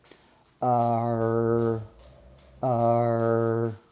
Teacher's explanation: as we move our tongue back there, it's creating what we call a rhotic quality